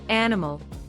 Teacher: stress goes on the first syllable